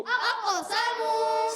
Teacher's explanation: سین کو باریک رکھنا ہے، سیٹی والے حروف سے ہے